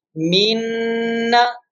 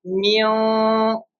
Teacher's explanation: In noon mushaddad, our tongue will touch with the palate and Okay. voice come from the nose.